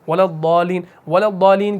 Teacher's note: ولا الضالین کے پھر آگے ہم ضاد سے ملاتے ہیں، شمسی کا رول بھی ہو رہا ہے